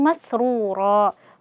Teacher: wau sukun sebelumnya dhammah maka dibaca dua harakat mad asli kemudian ro di sini mad iwat ya seperti yang sudah dijelaskan sebelumnya wa amma mim yang bertasydid di sini Ini berarti ada ghunah musyaddadah.